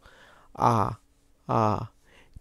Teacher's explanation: তুমি এবার আ উচ্চারণ করে দেখো, তোমার জিহ্বাটা একদম নিচে আছে এখন